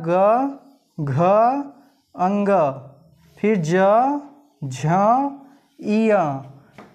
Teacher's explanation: जब ऐसे हम उच्चारित करते हैं तो हमारी स्वर तंत्रियाँ में कंपन होता है और इसमें झंकृति उत्पन्न होती है, तो ये घोष के अंतर्गत आएंगे।